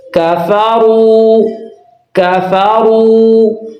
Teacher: اور واو مدہ ہے، اس کو ایک الف کے برابر لمبا کر کے پڑھنا ہے